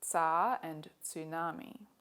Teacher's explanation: Russian and Japanese both have a voiceless alveolar affricate, as in the words tsar and tsunami